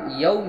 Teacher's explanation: یوم میں واولین ہوا، واو ساکن سے پہلے زبر ہے، نرم آواز جلد ادا کریں